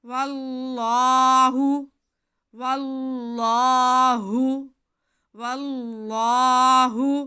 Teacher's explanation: ऐन युअम्मर, ऐन युअम्मर मिनल अज़ाबि अन युअम्मर واللہ، واو پہ زبر اور ساتھ میں اس میں جلالت اللہ، تو واو پہ زبر ہونے کی وجہ سے اس میں جلالت اللہ کو ہم موٹا کر کے پڑھیں گے